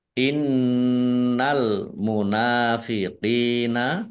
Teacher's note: Nun tasdid dibaca gunah atau mendengung Ya ditahan biar tampak dengungannya